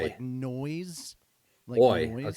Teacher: instead of saying I words, you're saying OI